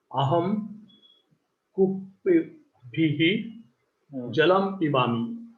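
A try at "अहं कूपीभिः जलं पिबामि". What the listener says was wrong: Uttama.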